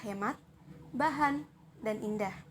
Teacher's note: ha ini termasuk dalam bunyi laringal termasuk dalam bunyi geseran dan bersuara